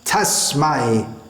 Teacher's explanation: That s should not be softened to a z sound.